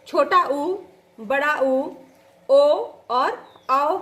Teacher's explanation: पश्च स्वर कहलाता है जीभ का पिछला भाग जहां पर थोड़ा सा उठता है। इसमें छोटा ऊ, बड़ा ऊ, ओ और औ शब्द आता है।